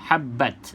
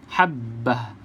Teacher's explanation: berhenti Kita tak sebut habbat sebab Ta ini ta yang bulat ta yang bulat ni kita berhenti dia seolah-olah bunyi huruf ha